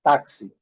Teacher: Aqui, observando duas sílabas. A primeira sílaba mais forte, a segunda mais fraca.